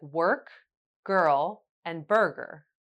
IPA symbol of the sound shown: ɜ: